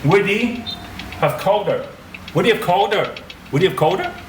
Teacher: The h is dropping off. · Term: connected speech